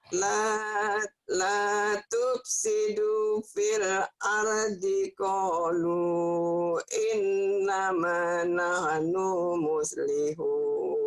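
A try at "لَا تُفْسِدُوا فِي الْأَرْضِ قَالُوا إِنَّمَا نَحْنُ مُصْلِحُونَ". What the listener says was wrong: No-nya pendek. Innama nahnu muslihun.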